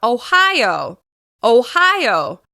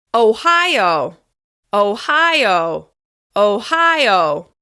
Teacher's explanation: Ohio is stressed on the second syllable.